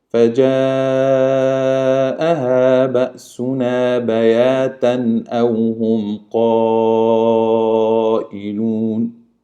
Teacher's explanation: Yes, we have here Hamza coming after the Tanween, and that's what we call it Izhar. The Tanween will be clearly read without any nasal or hiding.